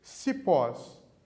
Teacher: cipós duas sílabas e a última é a tônica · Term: oxítona